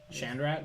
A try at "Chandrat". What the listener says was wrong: Rat instead of rot.